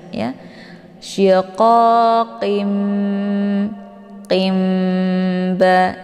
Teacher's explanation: tanwin bertemu dengan huruf ba yaitu ini dinamakan dengan iqlab ya cara bacanya tanwinnya dibalikkan ke dalam bunyi mim jadi yang dibaca di sini bukan lagi tanwinnya tetapi bunyi Mim